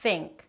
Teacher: That's the voiceless th and it's substituted with a T sound, in comparison to 'th' 'they' The voiced th, which is substituted with a D sound.